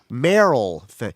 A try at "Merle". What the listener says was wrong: It's spelled like it should be Merrell, but he pronounced it Merle.